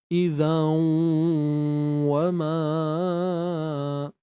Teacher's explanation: wau ni Memang makhraj bibir syafatain muncung bibir